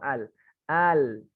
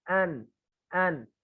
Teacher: nempel semua kan tepinya nempel semua tapi kalau Nun n n cukup pucuknya aja